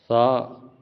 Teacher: ثا بالکل آپ نے نارمل پڑھنا ہے، کوئی موٹا نہیں، سیٹی کی آواز نہیں